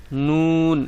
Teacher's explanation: জিহ্বার আগা তার বরাবরের উপরের তালুর সঙ্গে লাগায় অর্থাৎ আপনার জিহ্বার আগাটিকে ঠিক আগাটি যেখানে থাকবে তার উপরের তালুর